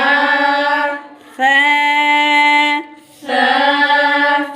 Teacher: سا کو بالکل نرم پڑھتے ہیں، زبان اوپر والے جو سامنے کے دو دانت ہیں ان کے ساتھ اس کو ہلکا سا ٹچ کرتے ہیں